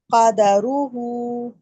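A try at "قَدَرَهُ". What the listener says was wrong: قاف کو موٹا بھی کریں. قدرہ.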